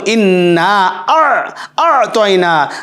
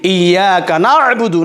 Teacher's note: গলার ভিতর থেকে মাঝখান থেকে আইন